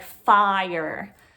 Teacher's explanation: your tongue has to come up again i and then it goes er so you're just adding on that i on there so it's